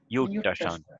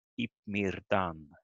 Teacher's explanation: the R and the DD goes together to one retroflex sound.